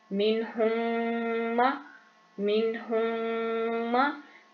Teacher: आवाज आपकी नाक में जाएगी, उसको गुन्ना कहते हैं।